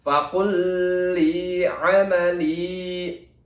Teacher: lam di sini juga berharokat kasroh bertemu dengan ya mati, maka hukum bacanya adalah mad tobi'i atau mad asli, dibacanya 2 ketukan.